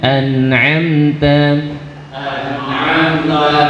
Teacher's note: Nun punya sifat bainiyah, mim punya sifat bainiyah. Sedikit mengalir suaranya.